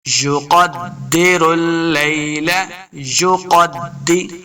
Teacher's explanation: قاف حروف مستعلیہ سے اس کو موٹا پڑھیں گے، دال کے سامنے لانا ہے، دال مشدد ہے.